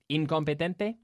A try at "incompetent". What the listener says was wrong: Nice. Two hard T's there.